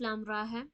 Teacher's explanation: را میں تو کھڑی زبر ہے تو اسے اتنا نہیں کھینچیں گے